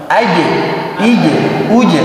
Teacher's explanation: Terakhir qalqalah, pantulkan. Aji, ije, uje. Pantulannya tipis. Tidak ajo, tidak tebal.